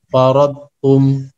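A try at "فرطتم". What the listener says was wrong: Nah, itu ada tasydid di ro-nya. Farrattum.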